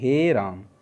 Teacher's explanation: तो जब हम राम को बोलते हैं तो बहुत ज़्यादा खींच के बोलते हैं, तो जैसे हम राम को बोलेंगे तो इस तरह से बोलना चाहेंगे राम को, ठीक है। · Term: पिलुप्त स्वर